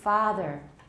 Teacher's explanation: so ah is the longest vowel there is anyway in american